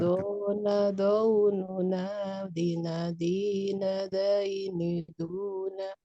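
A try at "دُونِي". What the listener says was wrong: Jangan sampai daini, tapi doini.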